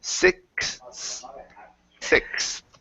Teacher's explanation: the X is going to be a KS sound plus the TH. So it's sixth.